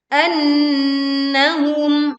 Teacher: nun bertasydid kita baca dengung sempurna